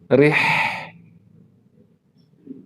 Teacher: Ya, rih ya, tengah tenggorokan. Ya, wasatul halaq.